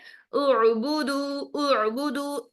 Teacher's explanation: हमजा sorry, आइन को हमने देखा कि आइन एक नरम लेटर है, आइन को साकिन हालत में अदा करते हुए आवाज को फ्लो की तरह चलाते हैं, यानी आवाज जारी रहती है, झटके से बंद नहीं होती है।